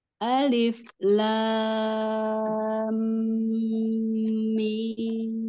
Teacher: panjangkan lagi ee mad lazim huruf lamnya enam harakat